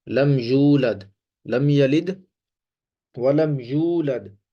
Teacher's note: یہاں پہ واو مدہ ہے، اس کو کھینچ کے پڑھتے ہیں